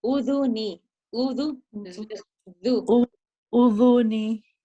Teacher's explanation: you forgot to place your tongue between your teeth